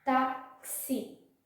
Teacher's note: Nós falamos táxi, mas na hora de ouvirmos, sempre vai ter o som do K e do S. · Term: fonema